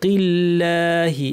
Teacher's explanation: এখানে আল্লাহের লামটা পাতলা করলাম, কেননা এর আগে জের আছে, এই জন্য কিল্লাহি পাতলা করে বলতে হবে।